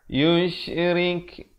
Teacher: ri dibaca nipis dan diberikan hamas pada huruf kaf itu